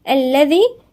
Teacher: الذال هنا من الحروف اللثوية